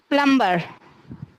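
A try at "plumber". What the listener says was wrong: অনেকবার বলে দিয়েছি না যে বিটা সাইলেন্ট থাকবে। প্লামার।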